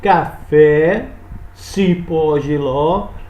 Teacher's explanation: oxítono, última sílaba é a mais longa, é a tônica